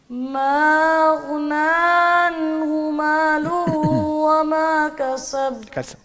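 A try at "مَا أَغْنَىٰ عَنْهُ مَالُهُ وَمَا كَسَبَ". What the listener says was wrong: وہی مسٹیک ہے، دوبارہ ما پہ مد نہیں کی اور آخر میں کسب اس پہ کلکلا کریں گے. ما اغنى عنہ مالہ وما کسب.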